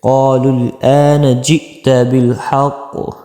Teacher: اکثر لوگ اس حمزہ کو عین پر دیتے ہیں، آپ نے عین نہیں پڑھنا، آپ نے پڑھنا ہے خالص حمزہ کی ادائیگی کرنی ہے